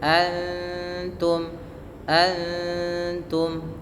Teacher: Ikhfa hakiki. Suara nunnya samarkan kepada makhraj huruf ta. Dari mana? yaitu ujung lidah kita menempel dengan antara gusi atas dengan gigi seri atas.